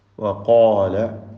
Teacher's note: ഖാഫിനും അലിഫിനും തഫ്ഖീമാണ്.